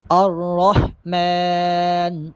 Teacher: الرحمن الرحمن، یہاں پر را موٹا پڑھیں گے اور ہا کی آواز واضح طور پہ آئے۔ الرحمن، میم پہ کھڑا زبر ہے، میم کو ایک الف کے برابر لمبا کر کے پڑھیں گے